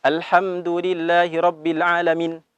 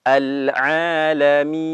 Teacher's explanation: Huruf nun memiliki sifat tawasud atau bainiyah. Secara perlahan lepasnya.